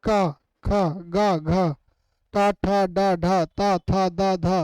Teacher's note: स्पर्शी व्यंजन हम उसे कहते हैं हमारे मुख द्वार को जब बंद करके खोलते हैं, जिससे छाया उच्चारित होने वाले स्थान को ही हम स्पर्शी व्यंजन कहते हैं।